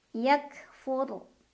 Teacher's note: dibacanya tafkim Karena ro sukun didahului huruf berbaris di atas jadi R dibaca dengan tebal pangkal lidah kita terangkat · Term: ro sukun dibacanya tafkim